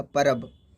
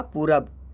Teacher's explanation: व का प्रयोग अधिकांशतः शब्द के मध्य में, अंत में, आरंभ में ब की तरह होता है। यानी शब्द के मध्य में, अंत में और आरंभ में ब की तरह होता है, वह ब के रूप में बदल जाता है।